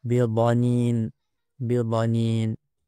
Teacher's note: Mesti disebutkan dengan jelas pada makhraj huruf dad, iaitu ujung lidah diletakkan di belakang gigi kapak, kemudian tepi lidah ditekankan pada geraham sebelah atas.